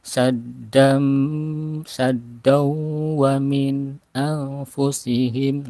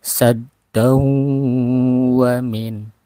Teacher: Nah, jadi sad langsung ke ada tasid dan saddam, terasa udara keluar dari hidung dan mulut. Saddam wa min, ditahan. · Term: gunah